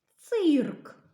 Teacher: к тобто слово цирк складається з чотирьох звуків і чотирьох букв перший звук ц який він твердий приголосний одна риска далі звук и голосний червоний кружечок далі звук р